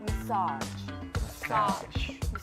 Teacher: the stress is in fact on the second syllable and the first syllable is a short sound